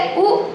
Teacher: پیش کی آواز آگے کو جاتی ہے اور ہونٹ گول ہوتے ہیں